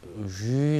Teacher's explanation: 이 소리는 영어의 pleasure 할 때 쥐 소리입니다. 그러니까 밖으로 새 나가는 소리면서 탁한 소리죠